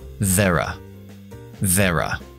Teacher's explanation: Y there are, aunque técnicamente no se puede contraer estas dos palabras, lo que hacemos es dejamos are en una schwa corta. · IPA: /ðeə rə/